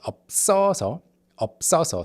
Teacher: after it's being carried over to the second syllable, ㅂ still affects the ㅅ in the second syllable, which had been carried over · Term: double ㅅ